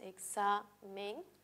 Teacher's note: Y si tenemos otra palabra, ya no anís, no otra diferente, tenemos, por ejemplo, la palabra examen, si la separamos en sílabas, examen, sabemos que la X entre dos vocales siempre se silabea con la segunda. Y si reconocemos la sílaba tónica en este caso va a ser sa